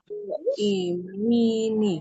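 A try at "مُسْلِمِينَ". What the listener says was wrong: So imina, bukan imini ya. So imina. ya, satu lagi juga kalau untuk jamak dia nunnya itu harokatnya fathah. Kalau untuk musanna itu nunnya harokatnya kasroh. Kalau untuk musanna ya huruf nunnya ini harokatnya kasroh nun terakhir.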